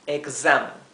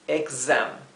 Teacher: En vez de ser una s suave, es una s zumbada. · Pero la X en inglés, en vez de pronunciarse x, se pronuncia la S esta, sería más bien una Z, porque es una vibración, como un zumbido de abeja, sería gz, así.